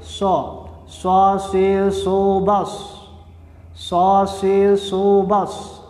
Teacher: Ada suara desis dan menyerupai suara siulan burung. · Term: safir